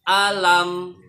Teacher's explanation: Kemudian syafawi itu artinya 2 bibir. Jadi bibirnya harus rapat pada saat mengucapkan mim mati ini · Alam, itu saja. Tidak ada ketentuannya ditahan. Jadi jangan alam, itu salah. Karena bukan dengung, bukan juga ada tasjid di mimnya. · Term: izhar safawi